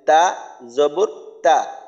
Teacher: জিহ্বার আগা সামনের উপরের 2 দাঁতের আগার সঙ্গে লাগাইয়া তা জবর তা